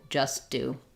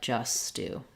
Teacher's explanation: using that unreleased T because I just release it on the word do